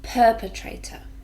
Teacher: four syllables and we stress the first one